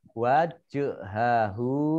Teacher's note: jim sukun, bacaan qalqalah, dibaca memantul. Wajhahu, hak domah berdiri, mat tabi'i, panjang 2 harokat.